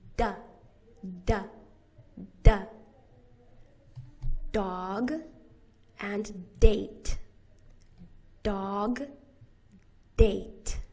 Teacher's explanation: You put the tip of your tongue to the alveolar ridge. That's the bumpy part behind your teeth.